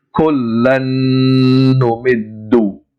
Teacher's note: And the Second part is we have to stretch that lan sound 2 times its original length, so it becomes kullan numiddu.